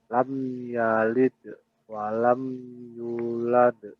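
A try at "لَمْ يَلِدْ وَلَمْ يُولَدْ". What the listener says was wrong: Lam yalidnya jangan terlalu lama berhenti. Lam yalid wa lam yulad. Yulad. U-nya yang panjang.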